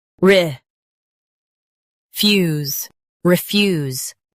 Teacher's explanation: Emphasize fuse and keep re light.